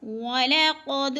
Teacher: وَلَقَدْ قاف موٹے حروف میں سے ہے، موٹا یعنی پر پڑھا جائے گا۔ قد دال پہ قلقلہ ہو رہا ہے، دال کو ہلا کر پڑھنا ہے، یعنی ہلانا۔